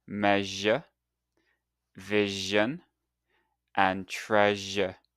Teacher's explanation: Put your tongue near the roof of your mouth just like the sh but this time add your voice